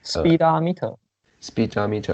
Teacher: the stress is on the second but the first syllable also has some degree of stress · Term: secondary stress